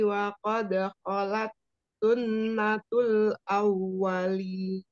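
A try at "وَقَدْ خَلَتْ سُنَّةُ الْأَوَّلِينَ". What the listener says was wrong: Coba diulang sunnah tuh kurang dengung ya non tasydid wajibul gunnah wa qad khalat sunnatul awwalin.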